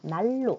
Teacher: 그래서 발음을 해보면 어떻게 되냐면 난로가 아니라 날로 이렇게 발음되거든. 그래서 니은은 리을과 만나 리을로 소리가 난다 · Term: 유음화